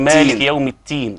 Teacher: البعض يجيب همس في الدال فيحولها تاء